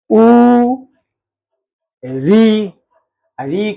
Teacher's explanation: ऋ कहां से होगा? मूर्धा से।